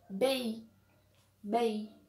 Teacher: quando o ar sai pela boca e sai também pelas fossas nasais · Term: ditongos nasais